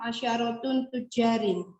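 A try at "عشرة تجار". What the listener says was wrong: Itu pakai tanwin nggak Bu? Kayaknya agak asyaratun atau asyaratu? Ya, tadi kayak agak ada nun-nunnya dikit. Ya, jadi kalau mudhaf tidak boleh pakai apa? Tanwin.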